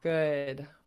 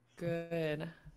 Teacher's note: you don't have to activate your voice box but we can still hear the way the air is coming out of your mouth just from rounding your lips it makes it a different sound